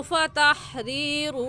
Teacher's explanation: रा के नीचे ज़ेर है, रा को बारीक करके पढ़ेंगे